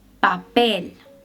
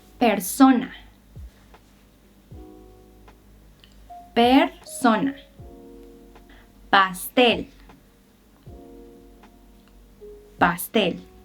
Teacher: La P en español no es tan explosiva como en inglés. No hay puff of air.